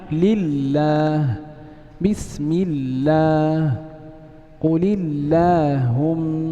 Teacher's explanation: ترقق لام لفظ الجلالة في هذه الأمثلة لأنها سبقت بكسر · Nah, الحكم الثاني والحالة الثانية للام لفظ الجلالة الترقيق، وذلك إن كان ما قبلها مكسورا